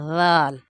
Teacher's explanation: درمیان میں زبان آئے گی اور ذال نرمی سے ادا ہوگا